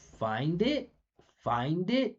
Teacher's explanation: this is consonant to vowel linking. So if the word finishes with a consonant sound, less next sound is a vowel.